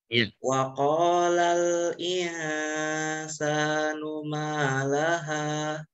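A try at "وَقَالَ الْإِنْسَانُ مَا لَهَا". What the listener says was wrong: Jadi gini, huruf qaf itu kan terdengar bunyinya seperti O kan Faza ya. Nah, kebiasaan kita kalau bilang O itu suka monyong ke depan. Nah, itu tidak.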